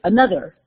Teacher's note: My TH went into that D, part of my dialect. Not only part of my black dialect, but also part of my southern dialect as well.